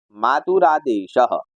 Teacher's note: तो विसर्ग और आ यहां इन दोनों के मेल से जो परिवर्तन हुआ वह यह हुआ विसर्गों का हो गया र और र में मिल गया आ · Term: विसर्ग संधि